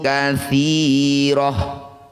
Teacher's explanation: Tak marbutoh ketika berhenti bunyikan hak sukun.